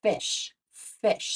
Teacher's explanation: we don't actually turn our voice sound on for that F sound it's an unvoiced sound so there's no buzzing in our vocal cords · when we make the f sound, like at the start of the word fish, we don't actually turn our voice on for that f sound. It's an unvoiced sound